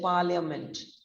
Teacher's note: the first syllable par is long stressed rhyming with a car